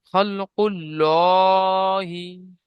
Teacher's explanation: আল্লাহ শব্দের ডানদিকে পেশ আছে তাই আল্লাহর লামটাকে পুর করে পড়তে হয়